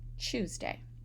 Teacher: So that T is pronounced as a ch for me